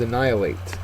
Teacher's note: the second syllable is accented